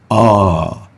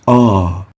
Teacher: So as a velarized alif is pronounced, the middle of the tongue takes a concave shape leading to the magnification of the sound and the echo